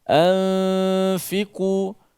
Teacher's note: Nun bertemu dengan huruf fa yang hukumnya adalah ikhfa hakiki.